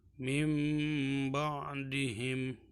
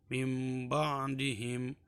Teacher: Jadi nun sukun tersebut bukan dibaca nun tapi mim ya. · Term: iqlab